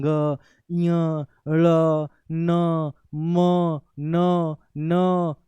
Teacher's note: नासिक मतलब नासिका। नाक के पीछे-पीछे नाक से हवा पीछे-पीछे आती है। इसलिए इसको अनुनासिक के नाम से भी जानते हैं।